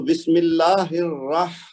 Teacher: را کو موٹا پڑھنا ہے، 2 بار پڑھنا ہے